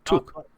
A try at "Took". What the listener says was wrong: No, I'm hearing book.